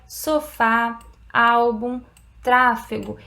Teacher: ele vai marcar o som aberto nas vogais